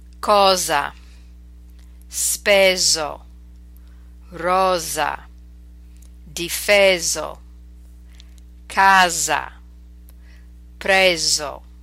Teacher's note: this is the single s between vowels to make that Z sound